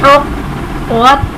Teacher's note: क़ाफ हर्फ़े क़लक़ला मुशद्दद इसलिए इसे हम खूब ज़ाहिर करके जमाव के साथ पढ़ेंगे